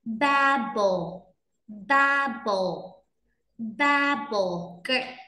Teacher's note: trọng âm rơi vào âm đầu tiên, mọi người nhớ nhấn mạnh âm đầu tiên ạ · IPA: /ˈbæb.əl/